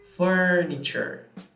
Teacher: you have the schwa and it is stressed but it's also long